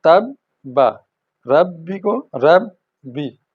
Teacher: रुक कर आगे चल जाती है आवाज़, जैसे तब्बा, तब्बा, ये जब शद आ जाए, ये 3 किंगरों वाली निशानी, तो आवाज़ 2 दफ़ा अदा होती है, पहले रुक कर फिर हरकत करके